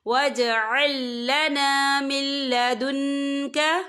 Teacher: وَاجْعَل لَّنَا مِن لَّدُنْكَ، یا دیکھیں مل، یہاں نون ساکن ہے، نون ساکن کے بعد جو ہے لام آ رہا ہے، اور لام جو ہے حروف یرملون میں سے ہے تو یہاں پر ادغام ہوگا، تو ہم اسے بنا غنّے کے پڑھیں گے۔ یاد رہے یہاں پر آپ نے غنّہ نہیں کرنا، اسے بنا غنّے کے پڑھنا ہے۔